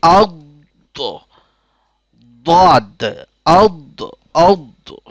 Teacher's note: জিহ্বার ডান অথবা বাম কিনারা, উপরের দাঁতের মাড়ি, এখান থেকে উচ্চারিত হয় দোয়াত